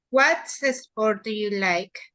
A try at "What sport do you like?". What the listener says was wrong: Excellent. Very good.